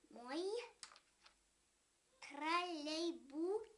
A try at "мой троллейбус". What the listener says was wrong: Давай еще раз, чтобы язычок был за зубком, чтобы его не было видно.